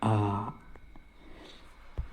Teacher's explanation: पहला है विवृत स्वर, मुंह पूरा खुला होता है। कोई भी डेंजर चीज देखते हैं तो मुंह पूरा कैसे खुल जाता है, ऐसे खुल जाता है, आ।